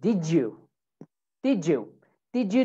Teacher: if we have a D, okay, and then we have a Y sound, D and a Y, so it makes a J sound